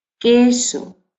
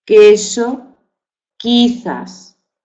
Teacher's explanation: El grupo que forman representa el fonema oclusivo velar sordo de queso, queso. No se pronuncia Q, sí se pronuncia que.